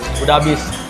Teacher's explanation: kesalahan tersebut itu terjadi karena adanya penghilangan bunyi huruf S di awal kata udah. Bentuk yang benar sesuai kaidah adalah sudah. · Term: kesalahan penghilangan fonem